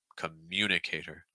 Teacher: you're going to hear the stress on mune